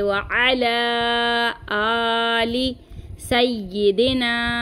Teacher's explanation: आइन की आवाज़ को हम ज़ाहिर करेंगे और इसको 3 अलिफ की मिकदार खींच के पढ़ेंगे